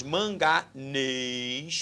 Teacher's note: sílaba tônica é a última oxítona